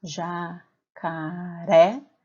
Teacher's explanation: Quando eu faço a separação de sílabas dessa palavra, jacaré, fica fácil observar que a sílaba tônica é a sílaba ré